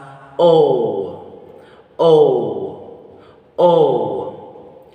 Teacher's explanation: The muscular tension of these vowel sound is tense. The tongue height is mid. The tongue advancement of this vowel sound is back. And lip shape is rounded.